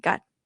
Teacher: Got. So you you cannot even force a mid tone. It's kind of dip low right away like low tone.